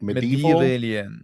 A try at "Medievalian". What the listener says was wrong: You're adding a syllable. It's medievalian.